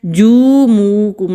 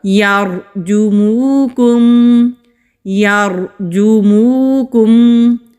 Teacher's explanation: علیکم، علیکم، یرجموکم، روا سے پہلے زبر ہے تو روا کو موٹا پڑھیں گے، جیم کے اوپر پیش ہے، جیم کو کھینچنا نہیں ہے